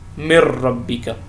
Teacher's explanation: نون کی جو اپنی آواز تھی وہ ختم ہو گئی اور وہ را کے اندر مدغم ہو گیا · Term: ادغام